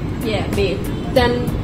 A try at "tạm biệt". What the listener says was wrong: Tạm biệt. Yeah, you have to down your tongue.